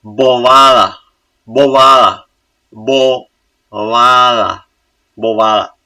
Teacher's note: No, the first B should be strong. Why? It's syllable initial before a vowel. · The B should be soft too, because it's between vowels, it's in intervocalic position.